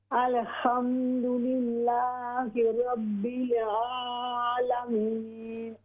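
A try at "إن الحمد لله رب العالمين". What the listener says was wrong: हाँ जी, अभी माशाअल्लाह ज़बरदस्त है आपकी आइन।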